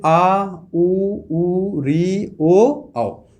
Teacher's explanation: ऐसे वर्ण जिनका उच्चारण करते समय हमारी जीभ जो होती है वो पीछे की तरफ जाती है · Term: पश्च स्वर